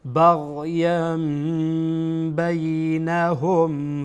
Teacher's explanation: بعد از تنوین با آمده از حرف اقلاب هست، بناهن تنوین را به میم تبدیل میکنیم